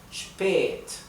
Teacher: Y la A con la diéresis, ¿sí? Cuando no está seguida por una doble consonante, se pronuncia un poco más larga